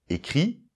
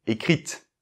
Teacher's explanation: Et là, comme il y a un e, parce que ça fait l'accord avec le sujet, on va en reparler, eh bien, on entend le t du coup.